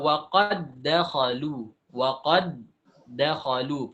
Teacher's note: Sudah tidak ada qalqalah lagi karena sudah idgham. Idgham, kalau idgham itu makhraj itu sekali terkatup. Tidak dua kali. Kalau kita qalqalahkan berarti dua kali.